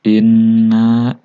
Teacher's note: Inna di sini nun bertasydid. Artinya ini dibaca gunnah. Dibacanya 2 sampai 3 harokat.